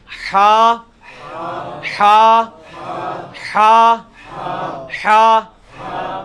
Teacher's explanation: مشکل تین حروفوں میں سے حا حلوائی والا جو حا ہے یہ وسط حلق سے یعنی حلق کے درمیان سے نکلتا ہے